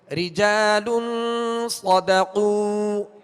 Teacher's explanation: صاد کو پر پڑھیں گے حروف مستعلیہ میں سے، صدقوا، صاد میں سیٹی کی آواز بھی ہوگی، اور قاف کا جب پیش پڑھیں گے واو مدہ ہے، ایک الف کی مقدار کھینچیں گے اور ہونٹوں کو کامل گول کریں گے تاکہ معروف طریقے سے ادا ہو. اگر کامل گول نہ کیا تو مجہول پڑھا جائے گا، صدقوا پڑھا جائے گا، لہذا صدقوا ہونٹوں کو گول کریں گے.